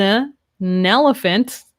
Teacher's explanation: it's almost like this n is at the start of elephant